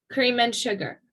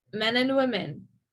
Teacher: the schwa sound in and is also linked to the final sound of the word that comes before it · And again, it just sounds like you're just saying the N, but really what's happening is you're reducing it to a schwa sound and you're also making the D silent